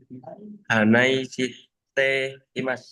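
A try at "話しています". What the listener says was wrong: Bukan. Nggak ada Hanai, nggak ada I di situ. Ya, hanaste imasu.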